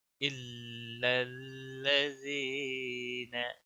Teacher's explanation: लज़ीन यहाँ या मद्दा है, एक अलिफ के बराबर खींचना है।